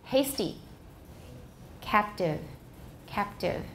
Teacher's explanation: And T after another consonant, for example, in hasty and captive is also voiceless.